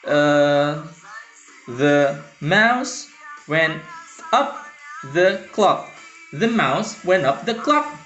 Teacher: unstressed stressed unstressed stressed · So it's iamb or iambic. Unstressed, stressed.